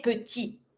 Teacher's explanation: It's not the R, it's not the L, so it's mute. So you say petit without pronouncing your T.